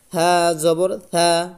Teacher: থাটা হবে নরম, জিহ্বার আগা সামনের উপর দাঁতে লাগিয়ে।